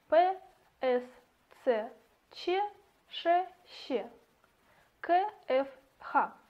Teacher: глухие согласные это псс ччч кфх состоят только из шума